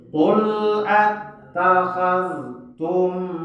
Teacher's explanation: Ya, mim mati bertemu dengan ain. Tidak boleh kita baca dengung, tetapi harus izhar syafawi.